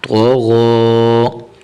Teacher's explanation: تو زبر تو، غین کھڑا زبر غو، تو غو. یہاں پر حرف تو جو ہے اسے بھی پر کرنا ہے، موٹا کر کے پڑھنا ہے، اور جو آگے حرف غین ہے اسے بھی موٹا کر کے پڑھنا ہے